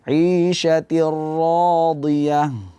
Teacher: Ra tasydid ini hati-hati, biasanya sering terjadi kesalahan ketika pengucapan ra tasydid itu getaran lidah ketika mengucapkan huruf ra terlalu berlebihan. Di aliran suara agak dikurangi ketika sampai di ra sukun supaya tidak berlebihan getaran lidah kita.